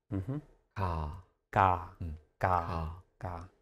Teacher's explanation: if I say ga, you might hear more of a K, you might hear more of a G.